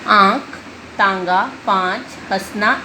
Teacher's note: अनुनासिक इस चिन्ह को अनुनासिक कहते हैं। अनुनासिक का उच्चारण करते समय श्वास मुंह और नाक दोनों से निकलती है और थोड़ी सी गर्म होती है